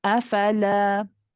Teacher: the lam has an alif with it, so we do prolong it a little bit